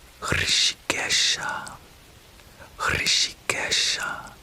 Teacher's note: And you might also notice the common theme of a rolling R in these names for Krishna, as well as the a sibilant sound, shh, shh, kind of whistling S